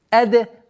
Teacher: Даль со свойством взрывность